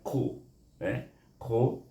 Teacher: terangkat lidah kita, iaitu huruf isti'la ni, terangkat pangkal lidah kita.